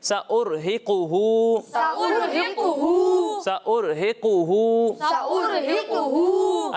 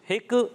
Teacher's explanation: قاف کا پیش بالکل واضح ہونا چاہیے، یہ کلکلا نہیں لگنا چاہیے، سأرہق ہک نہیں، ہقو، قاف پہ پیش ہے، پیش بالکل واضح ہونا چاہیے۔